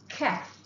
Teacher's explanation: Huruf kaf iaitu pangkal daun lidah. Ya. Pangkal daun lidah terkeluar sedikit. Takruju birtifa.